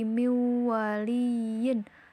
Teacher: memasukkan huruf sebelumnya ke dalam huruf setelahnya dengan dengung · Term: Idgham Bighunnah